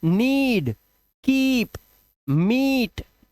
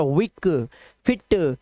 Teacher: double E का उच्चारण long vowel sound ई से ही करेंगे